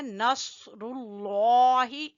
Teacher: صاد کو موٹا پڑھنا ہے، پر پڑھنا ہے، نصر اللہ، لفظ اللہ کو بھی موٹا پڑھیں گے۔